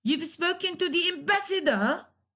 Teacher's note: At the end of the sentence, you raise your tone. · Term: rising intonation